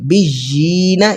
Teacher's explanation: قاف نون زبر کن، نون زبر نا، میثاقن، با یا زیر بش یا زیر جی، بجینا، یا پر کھڑی زیر ہے تو کھڑی زیر کو ہم نے کھینچنا ہوتا ہے 1 سیکنڈ 1 الف کے برابر